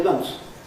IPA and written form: mʌns (months)